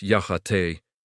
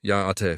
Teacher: Notice the high tone on the te part.